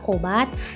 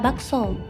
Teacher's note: o Tengah atas belakang bundar dan o Tengah bawah belakang bundar